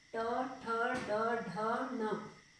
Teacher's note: तालु और गले के बीच के भाग से इन शब्दों का प्रयोग किया जाता है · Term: ट वर्ग